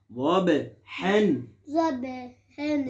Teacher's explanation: یہاں پر با اس میں ہم کریں گے قلقلہ